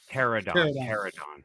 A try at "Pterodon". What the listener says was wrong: The P is silent.